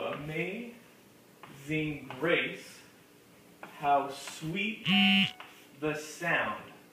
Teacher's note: So we'd say amazing is a three syllable word but we can kind of look for it amaze. The emphasis gets put on maze part.